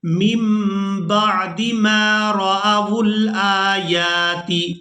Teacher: اب یہاں پر آپ لوگ نون پر یہ چھوٹی میم دیکھ رہے ہیں، اس میم کو ادا کریں گے. نون کو ہم نے یہاں پر ادا نہیں کرنا، میم کے ساتھ اس کو بدل دینا ہے.